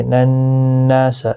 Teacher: نون مشدد پر غنہ ہوگا، ایک الف کے برابر کھینچ کر بھی پڑھا جائے گا کیونکہ الف مدہ بھی بنتا ہے۔